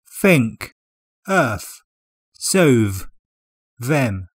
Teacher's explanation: don't say or they use F and think Earth so them this is called th fronting and it's found in lots of working class accents